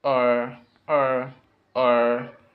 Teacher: the tongue is curved in the middle of the mouth and the tip of the tongue is not touching anything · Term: R sound